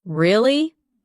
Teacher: when you ask a question like, Really? your voice goes up slightly at the end.